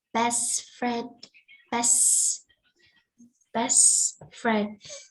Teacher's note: when we join the best and the friend together, we join two words together. So the T sound here would disappear.